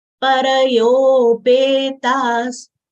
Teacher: After ta, there is a Visarga. Visarga sound comes out as half sa.